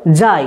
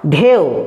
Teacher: যখন দুটো স্বরধ্বনি আমরা একসঙ্গে উচ্চারণ করছি তখন প্রথম স্বরধ্বনিটা খুব স্পষ্টভাবে পুরোটা উচ্চারণ হচ্ছে, তাই যৌগিক স্বরধ্বনির প্রথম স্বরধ্বনিটাকে বলা হয় পূর্ণস্বর, আর দ্বিতীয় স্বরধ্বনিটা একটু হলেও অস্পষ্ট রূপে অর্ধেক উচ্চারণ হচ্ছে বলে যৌগিক স্বরধ্বনির দ্বিতীয়টাকে বলা হয় খণ্ডস্বর বা অর্ধস্বর।